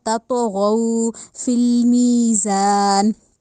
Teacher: کر کے پڑھنا ہے، غو نہیں کہنا یا گو نہیں کہنا، غین کو ہونٹوں کو گول کر کے ادا کرنا ہے